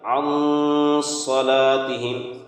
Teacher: نون ساکن کی آواز کو ناک میں چھپا کر پڑھیں گے